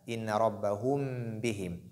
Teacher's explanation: Il y a ce qu'on appelle al-ikhfa al-shafawi, donc la dissimulation labiale.